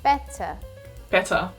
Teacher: would better the t sound sounds more like a soft d even though there are t's in the word when you pronounce it it sounds more like a d